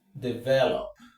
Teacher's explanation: The stress naturally is on ve.